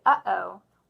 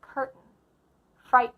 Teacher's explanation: this glottal stop occurs from the throat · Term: glottal stop T